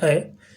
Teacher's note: कंठ और तालु दोनों से बोला जाता है। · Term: कंठतालव्य